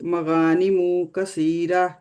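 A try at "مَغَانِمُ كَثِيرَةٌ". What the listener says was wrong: मगानी मुंह, नहीं मुंह कहेंगे ना तो वाव आ जाएगी आगे।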